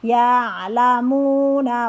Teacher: ya ainnya dari tenggorokan bagian belakang